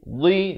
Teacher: dhi di tepi lidah